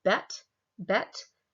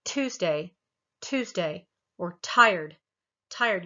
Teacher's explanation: you'll feel that aspiration you'll feel that little bit of breath of the air that comes out